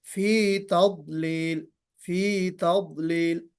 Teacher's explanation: تضلیل میں ضاد میں قلقلہ نہیں ہونا چاہیے. بعض لوگ قلقلہ کر دیتے ہیں فی تضلیل، ایسا نہیں ہونا چاہیے.